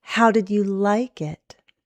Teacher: Go up on like and down.